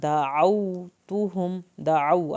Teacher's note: دعو عین حلق سے پڑھیں گے